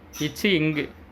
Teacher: நாவின் இடை அன்னத்தின் இடை